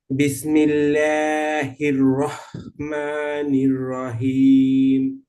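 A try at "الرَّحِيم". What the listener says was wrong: হাঁটা আর একটু সুন্দর করতে হবে। রহিম, হাঁটাকে হ্যাঁ একটু শক্ত আওয়াজে গলার মধ্যখান থেকে হ্যাঁ উচ্চারণ করতে হবে।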